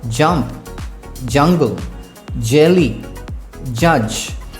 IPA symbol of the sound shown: dʒ